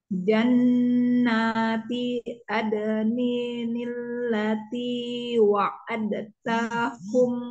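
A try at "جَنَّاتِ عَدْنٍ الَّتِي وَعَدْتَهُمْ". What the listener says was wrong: Ya, Umi tadi dalnya kebaca. Yang seharusnya tidak kebaca ya, Coba diurang dari wa'ad.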